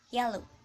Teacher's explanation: The tongue begins in high front position similar to the vowel E, but the airway is slightly more constricted. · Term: J consonant